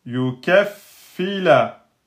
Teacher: Il faut faire un petit renforcement là sur le fa. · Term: shidda